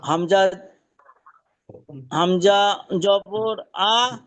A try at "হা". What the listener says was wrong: হামজা না, হা হা।